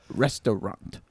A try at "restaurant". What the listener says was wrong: Nope. You exaggerated the middle syllable with a different vowel. You went from A-U to O.